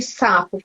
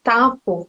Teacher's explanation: ela está trocando um som comprido, né, produzido com a ponta da língua, por um som curto, por uma plosiva